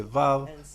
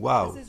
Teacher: La razón es que Vav versus Wow es simplemente una diferencia de dialecto. En diferentes dialectos del hebreo la gente dice Vav y algunos dicen Wow.